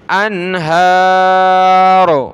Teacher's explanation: را کو موٹا کرنا ہے